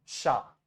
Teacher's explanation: ए जो लेटर है उसको हमेशा मुंह खोल के आ पढ़ना है, ए नहीं पढ़ना इंग्लिश की तरह